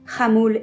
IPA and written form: xamul (Hamul)